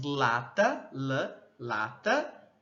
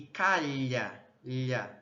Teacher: Então percebam que o L, né, em lata, ele entre os alvéolos e o lá, ele já tá mais na região do céu da boca do palato. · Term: lateral